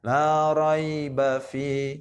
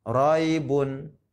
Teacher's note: ya tidak panjang, cuma sekedar meleok gitu, meleok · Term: mat lain